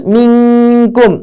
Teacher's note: Jadi nunnya tertutupi karena huruf kaf, ya. Minkum, kita sudah siap-siap bagian tengah lidah untuk ditempelkan di bagian atas. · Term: ikhfa